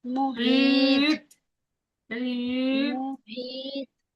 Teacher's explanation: ইয়া মাদ্দাকে একালিপ টেনে পড়তে হয়